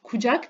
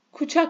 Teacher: Türkiye türkçesindeki Türkçe kökenli sözcüklerde bulunan C sesi Özbek türkçesinde Ç sesi ile telaffuz edilir